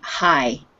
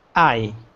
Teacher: Make sure there's no h sound, just I.